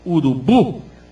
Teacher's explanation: urubu, o sílabo forte é o bu, urubu, não tem acento, mas não precisa ter acento.